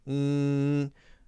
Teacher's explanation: when it's closed you'll notice that all of the air is coming out of your nose so what you can do is put your thumb up against